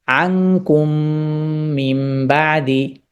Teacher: টাকে স্পষ্ট আওয়াজে উচ্চারণ করবে যেমন লাল্লাকুম তাশকুরুন কিন্তু এখানে আনকুম এখানে মিম সুকুনের পর আবার মিম এসেছে তার মানে এখানে ইদগাম হয়েছে এখানে গুন্নার আশ্রয় নিয়ে পড়া হচ্ছে